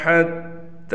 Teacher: تا پر کڑا زبر ہے لہٰذا اس تا کو 1 الف کے برابر کھینچ کر پڑھیں گے